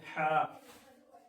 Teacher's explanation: ہا جو حرف ہے یہ حلق کے بیچ والے حصے سے نکلتا ہے